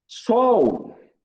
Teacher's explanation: o L tem som de W